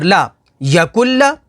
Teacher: نون کو سکپ کر دیں گے اور کاف کو لام کے ساتھ ملا کر پڑھیں گے